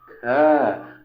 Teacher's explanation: और जब हमने ख कहा तो हमारे अंदर से बहुत सारी हवा बाहर निकली। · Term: महाप्राण